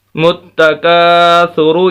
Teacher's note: تو بہرحال الہا کو متکا، تا پیسو، متکاسو، را پیشرو، متکاسرو۔ یہ کاف باریک پڑھنا ہے اس کو، اور را کو موٹا پڑھنا ہے